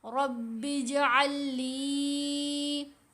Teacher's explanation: یہ ساکن لام اور مشدد لام اکٹھی آ رہی ہیں. اب ساکن لام جو ہے وہ مرج ہو جائے گی مشدد لام کے اندر، اور یہ جو ادغام ہے یہ ادغام مثلین کہلاتا ہے.